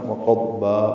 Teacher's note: وقضبا مد عوض ہے، 2 حرکات لمبا کرنا ہے۔